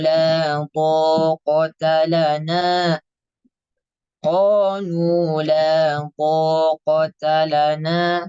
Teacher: huruf th sifatnya jahr tidak mengeluarkan udara